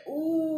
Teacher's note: ઉ એવું બોલીએ ત્યારે જીભનો પાછલો ભાગ જે છે જીહવા પૃષ્ઠ એ ઊંચો થાય છે અને એ વખતે મુખમાં આગળનું પોલાણ મોટું ઉ કરીએ એટલે પાછળનો ભાગ નાનો થઈ જાય ને આગળનો ભાગ મોટો થઈ જાય, આગળનું પોલાણ મોટું થઈ જાય, પાછળનું નાનું થાય.